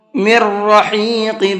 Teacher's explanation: میم کو را کے اندر ملانا ہے، نون نہیں پڑھا جائے گا